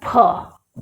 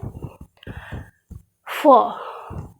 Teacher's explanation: पूरा होठ चिपका करके बोलते हैं, दोनों लिप आपस में जुड़ते हैं, तब इस फ का उच्चारण होता है।